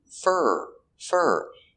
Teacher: For is not stressed, so we change the pronunciation to fur.